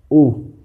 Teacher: ऊ का उच्चारण करेंगे होठों की आकृति गोल हो जाएगी, वर्ताकार है।